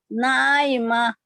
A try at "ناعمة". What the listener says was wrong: ہا کی آواز آنا ہے آخر میں ہائے ساتھ بنا رہے ہیں وجوه يومئذ ناعمة